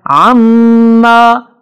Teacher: عما میم پر شد ہے اس پہ غنہ ہوگا